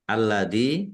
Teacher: Lamnya alladzi lamnya ada tasdidnya dibaca dobel ya ditekan biar tampak dobelnya. Dzal kasrah ya sukun mad thobi'i panjang dua harakat